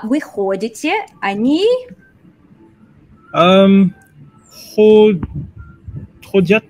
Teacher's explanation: Now from here on out, other than the я, all the stress is going to be on the ход